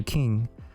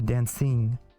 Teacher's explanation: The first sound change is that the A and the I sound tend to become long before NG.